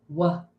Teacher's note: It is a sound that we hold a little bit. So, it's a continuous sound.